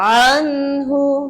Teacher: ওয়াসত হালকা, কণ্ঠনালীর মধ্যবর্তী স্থান, এখান থেকে আইন